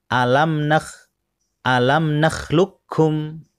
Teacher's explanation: jadi qafnya diabaikan langsung masuk di huruf kaf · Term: idgham